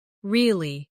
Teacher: with a falling tone to show you don't believe someone